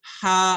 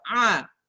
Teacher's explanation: untuk huruf ha dia ada udara yang keluar. Hamas, udara yang keluar. Sedangkan ain tidak ada udara yang keluar. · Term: hams